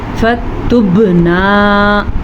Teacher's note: با کے اوپر ساکن آ گیا تو با پہ قلقلہ ہوگا